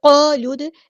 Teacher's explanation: یہاں پہ جو الف مدہ ہے وہ یہاں پہ ہیوی ادا ہوگا